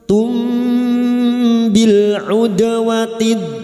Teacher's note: Mim sukun dibaca samar dan mendengung selama 3 harokat. Pada saat menyamarkan bunyi mim sukun, kita sudah siap-siap untuk membunyikan huruf ba, maka bunyinya tumbi. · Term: ikhfa syafawi